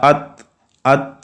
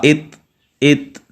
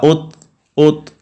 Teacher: جب زبان کو اپنی جگہ سے ہٹائیں گے تو وہاں پہ خود جو ہے وہ صفت ہمس پیدا ہو جائے گی